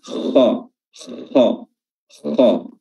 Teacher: Kha memiliki sifat tebal, isti'la, dan dia makhrajnya di tenggorokan bagian atas